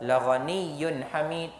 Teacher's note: tanwin jumpa ha, izhar halki, tidak ada dengung. · kita mengamalkan berhenti sebanyak dua harakat dan nama hukum dia mad arid lis sukun